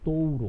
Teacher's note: decrescente começa com vogal e termina com a semivogal